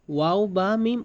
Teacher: ২ ঠোঁট হইতে ওয়াও বা মিম উচ্চারিত হয়